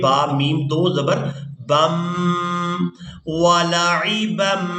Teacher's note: با کو میم مشدد کے ساتھ ملائیں گے